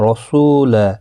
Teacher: واو مدہ ہے، 1 الف کی مقدار کے برابر کھینچ کر پڑھیں گے